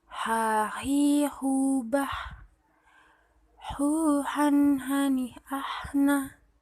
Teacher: Melafalkan huruf H dikeluarkan dari tengah tenggorokan sama seperti kita mengucapkan ayah.